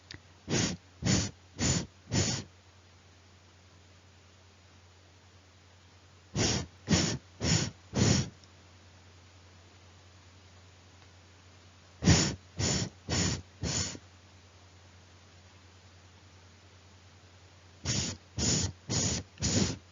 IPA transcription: θ